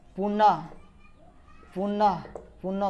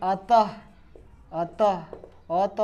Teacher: तो विसर्ग ह का उच्चारण कराता है